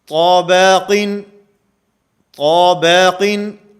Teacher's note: طا کو موٹا کیا جا رہا ہے، با کو باریک کیا جا رہا ہے